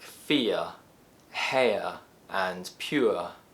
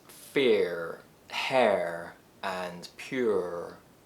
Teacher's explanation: These three diphthong sounds are characteristic of British English pronunciation, which tends to use lax vowel sounds.